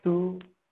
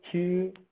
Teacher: Ada yang unaspirated, to, ada yang aspirated, to, ada yang unreleased. Unreleased itu, udah begini aja.